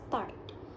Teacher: our tongue is in open back position where the tongue is position low and towards the back of the mouth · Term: back vowels